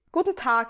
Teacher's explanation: I don't say Guten Tag because my D is very close to a T plosive · my d is very close to a t plosive i guess in general